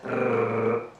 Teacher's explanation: The Italian R is in the front of the mouth